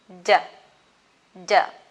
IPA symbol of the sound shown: d